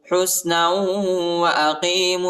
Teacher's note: للناس حسنا واقیموا الصلاة حسنا نون کو واو کے ساتھ ملائیں گے اور غنہ بھی کریں گے